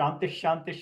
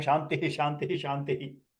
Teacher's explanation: Shantihi, you have to expel the visarga breath 2 times extra compared to Shantish